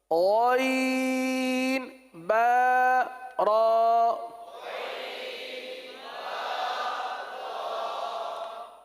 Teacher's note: اب اس کو غین پڑھنا جیسے کل عرض کیا تھا، گاف کی طرح نہیں پڑھنا، غین حلق کے اندر اتار کر پڑھنا ہے